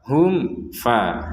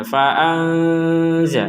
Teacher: Di sini mim sukun bertemu fa, maka kita bacanya dengan jelas. Nun sukun bertemu zai, kita bacanya dengan samar.